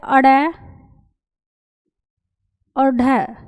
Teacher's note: ताड़नजात व्यंजन वे व्यंजन होते हैं जिनका उच्चारण एकदम धड़ाक से होता है